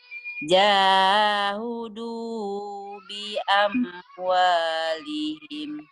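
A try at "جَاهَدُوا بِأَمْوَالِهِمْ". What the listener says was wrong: Bukan jahudu, jahadu. Jahadu bi amwalihim, Bu. Jahadu bi amwalihim.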